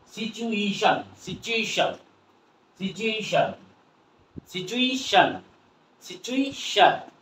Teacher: টি এর পরে T U যদি উচ্চারণ হয়, টি ইউ যুক্ত কোনো বর্ণ যদি থেকে থাকে বা কোনো ওয়ার্ড থেকে থাকে, তাহলে আমরা এর উচ্চারণ কি করব? উচ্চারণ চ হয়ে যাবে।